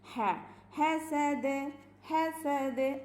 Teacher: ഹ ഹ തൊണ്ടയുടെ മധ്യഭാഗത്ത് നിന്ന് അയിനിന്ന് നമ്മൾ പറയാറില്ലേ, അവിടെ അതേ മഖ്റജ് തന്നെയാണ് ഹനും.